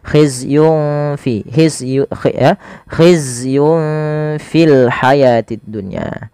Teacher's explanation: Sama cara membacanya ketika ia bertemu seperti huruf kaf maka samarkan langsung nunnya kepada huruf fanya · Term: ikhfa